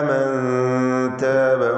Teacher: മൻ താബ സാക്കിനത്തായ നൂൻ ശേഷം താ ഇഖ്ഫാ ഹഖീഖി നൽകി അവ്യക്തമാക്കി മണിക്കണം.